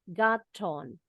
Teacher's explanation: But when I got on, boleh disambung ya. Kalau mau pakai gaya British English, huruf T yang di tengah itu tetap bunyinya T. Got on. When I got on, but in American English, when the T is placed in the middle of two vowel sounds, di antara dua bunyi huruf vokal, A, I, U, E, O, the T sounds like a quick D.